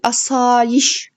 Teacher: Yişə düşür vurğu, yəni sonuncu hecəyə düşür. Uzanma isə asayiş ikinci A uzanır.